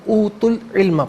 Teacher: اوتو میں تا پر پیش ہے, اسے العلم کے لام ساکن کے ساتھ ملائیں گے, درمیان میں سے الف حمزہ کو حذف کیا جائے گا.